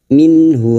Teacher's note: Nun sukun dibaca jelas tanpa mendengung. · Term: idhar halki